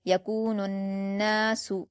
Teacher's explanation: نون مشدد ہے اور اس پر الف مدہ ہے، 2 حرکات کھینچ کر غنہ کے ساتھ پڑھا جائے گا